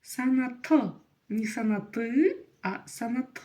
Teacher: Сана мы видим окончание как же его прочитать просто напомню что буква Ы в казахском языке чуть-чуть отличается от буквы ы в русском языке в казахском языке она звучит просто очень и очень коротко